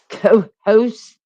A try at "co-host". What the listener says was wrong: See, I would put the T on the end of that one. Co-host. Like I'm really emphasizing. I'm emphasizing co-host.